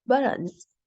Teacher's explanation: The T ends in the first syllable and is followed by a vowel, so we cut it at the back of the throat. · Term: glottal T